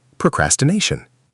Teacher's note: Next, procrastination. Stress on the fourth syllable.